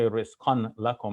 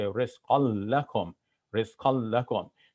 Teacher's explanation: So if any one of these 6 letters occur after the noon of tanween, then the noon of tanween gets assimilated into that next letter. So you see it happening with the lam as well, where we had rizqan lakum, rizqan, but we're not going to say rizqan lakum, we're going to say rizqal lakum, rizqal lakum.